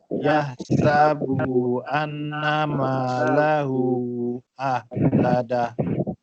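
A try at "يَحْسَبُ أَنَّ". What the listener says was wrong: Yahsabu bu tak panjang.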